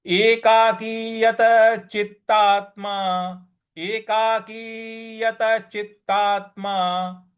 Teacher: आधा त जहां है वहां पर हमें आघात देना है